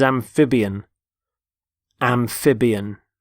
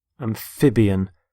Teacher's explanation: Notice the stress on the middle syllable, amphib. Amphibian.